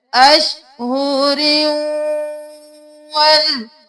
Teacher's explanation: یہاں پر ادغام مع الغنہ کا قاعدہ ہو رہا ہے، را کو واو میں ہم مدغم کر رہے ہیں غنہ کے ساتھ، کیونکہ یہاں پر تنوین ہے.